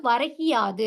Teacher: முதல் சொல்லோட இறுதியில இருக்கிற அந்த கு என்னும் எழுத்து கி என ஒலிக்கிறது. அதுவும் முழுமையாக ஒரு மாத்திரை அளவில் ஒலிக்காமல், அரை மாத்திரை அளவாக குறைந்து ஒலிக்கிறது. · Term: குற்றியல் இகரம்